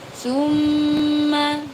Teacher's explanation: tumma ada mim bertasydid. Cara membacanya dengung ya. Dengung ini namanya ghunna.